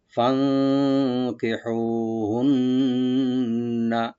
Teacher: আহলিহিন্না, ফানকিহুহুন্না, ফা ওখানে থাকবে, নুন সাকিন এখানে একফা করবো আমরা, ফান কি বলবো, হু, এখানে হাটাকে রাইট দিয়ে কালিফ টানবেন, আর নুন মুসাদ্দাদ এখানে ওয়াজিব গুন্না হবে কালি পরিমাণ